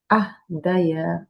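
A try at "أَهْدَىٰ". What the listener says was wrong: আফদা। ইয়া হবে না, কারণটা কি? ইয়ার উপরে কি আছে? আলিফ। এটা আসলে কি হয়ে যায়? এটাকে কি বলে ইয়ার উপরে আলিফটাকে? আলিফ মাকসুরা। তো আলিফ মাকসুরা যদি দায়ের সামনে আসে তখন সে আলিফ হিসেবে কাজ করবে, তাই তো? আলিফ হিসেবে কাজ করলে কি হয়ে যাবে? মাদ আলিফ হয়ে যাবে। আহদা।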